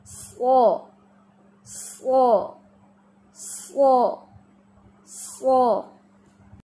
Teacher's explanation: तो ऐसे अगला हिस्सा ऐसे हो जाता है और पीछे से जुबान के राइट एंड लेफ्ट मोटे किनारे ऊपर दाढ़ों से लगते हैं, तब जाके ये स्वाद अदा होता है